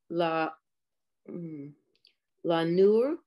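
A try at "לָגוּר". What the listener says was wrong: It's the Gimel.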